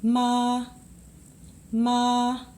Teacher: ma you know that this is just a straight ma ma just flat like that doesn't move doesn't go up or down just ma like holding out a note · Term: first tone